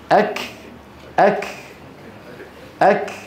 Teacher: الكاف الصماء الصماء يعني ما له صوت